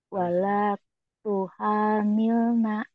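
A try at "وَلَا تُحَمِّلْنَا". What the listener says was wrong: wala tuham wala nah itu mimnya bertasdid ya jadi gunnah ditahan wala tuhammilna coba lagi wala tuhammilna kemudian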